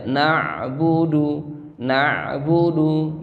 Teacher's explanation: dari segi tekanan dia tawassut, tidak terlalu menekan, sedang saja.